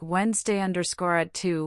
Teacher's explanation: pay special attention to linking words like Wednesday at two, which often sound like one word.